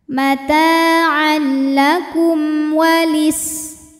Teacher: Kum ada hukum izhar syafawi karena mim sukun menghadapi selain mim dan ba yaitu waw, maka mim dibaca dengan jelas